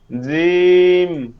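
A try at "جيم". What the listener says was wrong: জিম শক্ত হয়ে যাবে এটা, এটা হচ্ছে আপনার নিচের দাঁতের সাথে আসে দেখে এটা জিম হয়। জিম হবে, জিম। জিব্বাটা ভিতরে নিয়ে যান। জি জিম, এখানে কোনো জিব্বা নাই আমার, জিব্বা ভিতরে। জিম। হ্যাঁ, এরকম রাখতে হবে সবসময়, ঠিক আছে? জি, এই জি শব্দের মধ্যে জি, জে, জি, রজি, রজি এরকম একটু নরম আসতে পারবে না, একদম স্পষ্ট। রজি, শাইতানির রজি, জি জি। ইদা জা নাসরুল্লাহ, জা জা, ঠিক আছে? জিম।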